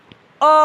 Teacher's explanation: अर्धविव्रत का मतलब होता है आधा मुख का खुलना। ठीक है, तो आधा मुख अ बोलेंगे तो उसमें आधा मुख हमारा खुला रह गया, तो इसमें अ आ गया।